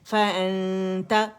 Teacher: نون کو چھپاتے ہوئے اور غنہ ریٹین کرتے ہوئے رائٹ ہوئے ہم نے حرف اخفا تا کے قریب جانا ہے